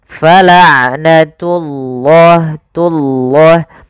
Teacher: pada lafal ain sifat bainiyah tidak terlalu ditahan suara ainnya dan tidak terlalu dilepaskan. Fala'natullah, tullah, tunya jangan tebal, jangan fala'natullah, enggak, tapi dia fala'natullahi, baru lafal Allahnya tebalkan.